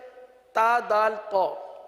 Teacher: ان تینوں کا ایک ہی مخرج ہے، یہ حروف نطعیہ ہیں، زبان کی نوک اور اوپر کے دانتوں کی جڑ سے ادا ہوتے ہیں۔